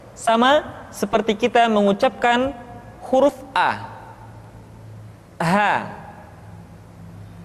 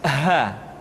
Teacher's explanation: dikeluarkan dari tenggorokan yang terjauh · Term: huruf H